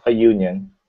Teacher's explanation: you write the letter u this is the vowel but that when you pronounce it it's union right that's not a vowel sound at the beginning